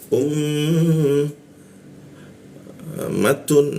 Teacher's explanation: U masuk ke mim. Nah, mim bertasdid ya. Kita tahan itu dua ketukan.